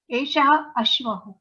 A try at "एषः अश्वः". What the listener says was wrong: Ashwaha, please tell it completely. Don't swallow anything.